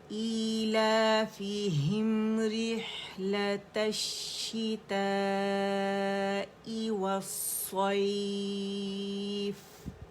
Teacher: آخر میں جو فا ساکن ہو رہا ہے اس کا ہمس واضح کریں گے